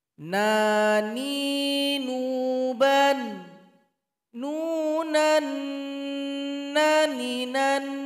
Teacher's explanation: aliran suara sedang saja tidak ditekan tidak pula mengalir